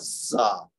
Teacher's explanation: اوپر اور نیچے کے سامنے والے جو دانت ہیں ان کو آپس میں ملائیں گے اور پھر زبان کی نوک اندر ان دانتوں سے ٹکرائے گی تو پھر ملے گی آواز زا.